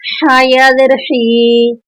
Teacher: ہم حلق سے ہا کو بیان کریں گے